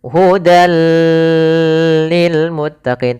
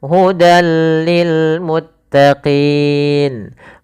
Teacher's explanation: kita memasukkan tanwinnya ke huruf setelahnya di kemudian bila gunah tanpa disertai dengan guna atau penahanan. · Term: idgham bila ghunah